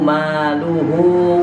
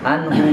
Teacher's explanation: Tapi pas maluhu, ya, itu baris domahnya terbalik. Maka hu-nya di situ dibaca panjang 2 harokat.